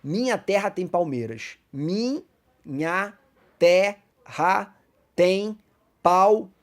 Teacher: Ou melhor dizendo, até a última sílaba tônica. Então acaba em mei, porque essa é a sílaba tônica da palavra palmeiras.